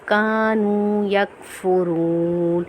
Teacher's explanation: واو مدہ کو ہم ایک الف کی مقدار کھینچ کے پڑھیں گے